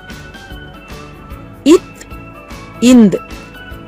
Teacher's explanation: ஆகிய 2 மெய்களும் மேல்வாய் பல்லின் அடியை, நாக்கின் நுனி பொருந்துவதால் பிறக்கின்றன